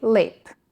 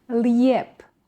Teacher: While Serbian standard sticks to the vowel E, Croats and Bosnians often add J between vowels, which slightly lengthens the words.